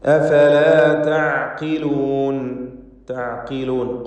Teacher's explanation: തഅഖിലൂൻ ഖാഫിന് കുറഞ്ഞ തഫ്ഖീം നൽകി ഉച്ചരിക്കണം. ഇസ്തിഅലാൻ്റെ ഹർഫാണ്.